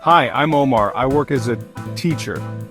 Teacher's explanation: Say, I'm not I am, it's a reduction. Link work as a sounds like workaza. · Stress on hi and Omar. Say, I'm not I am, it's a reduction.